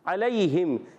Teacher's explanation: عین کی ادائیگی ہوتی ہے حلق کے درمیان والے حصے سے